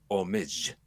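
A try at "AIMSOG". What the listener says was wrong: the O is silent, and they tend to call it AIMSAW. Yeah, I know, but they tend to call it AIMSAW for some reason.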